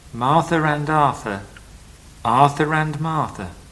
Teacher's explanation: In the following expressions, there is an R in the middle and no R at the end. Whatever the spelling pretends